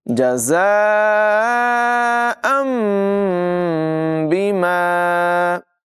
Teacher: ساکن کو میم سے بدل کر ادائیگی کی جاتی ہے، یعنی نون کی جگہ یہاں پر میم کی آواز آئے گی۔